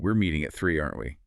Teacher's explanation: The vibe shifts from cooperative to anxious, entirely based on an upward inflection.